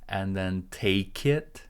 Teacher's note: T is an aspirated sound. You need to breathe out a little bit.